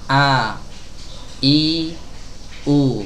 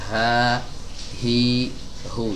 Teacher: H kasroh ini ya teman-teman ya, dia keluar dari tenggorokan bagian bawah, hi di pita suara ya, tapi pita suaranya nggak dirapatkan ya, beda sama hamzah. Kalau hamzah tuh rapat dulu, a, i, u. Kalau huruf H enggak, dia hanya mendekat saja, ha, hi, hu.